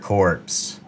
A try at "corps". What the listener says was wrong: core. I think it's pronounced core, man. Yes, it's silent. It's like Illinois or Des Moines.